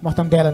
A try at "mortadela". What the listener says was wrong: Mortadela. Mortadela. O certo é mortadela. Tira o N aí, é mortadela.